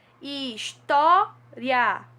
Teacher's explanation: O I e o A ficam juntos porque é um ditongo crescente e não separados